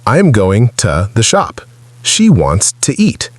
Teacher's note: To is usually pronounced as a very short, weak sound, a bit like ta, not a strong to sound. In careful or emphatic speech, it can sound like to, but in everyday flow it is reduced to ta. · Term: weak pronunciation